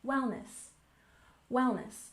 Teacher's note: we have wellness with stress on the first syllable, wellness, wellness.